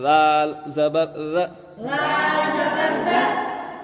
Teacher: زبر ر، میں بتایا تھا کہ زال کا مخرج نمبر 12، زبان کی نوک اوپر کی 2 دانتوں کے کنارے سے لگانا ، وہیں سے زال زبر ر، اس کے بعد زال الف